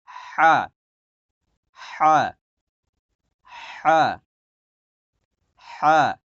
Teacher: হা, হা, এটা হলো হায় হত্তি, বড় হা যেটা, হ্যাঁ। হা, গলার মাঝখান থেকে, মানে আইন যে জায়গা থেকে উচ্চারণ করলেন, আইন, আইন, এই হা ঠিক একই মাখরাজ থেকে একই জায়গা থেকে উচ্চারণ হবে। হা, হা, ডাবাইয়া, গলাটাকে ডাবাবেন।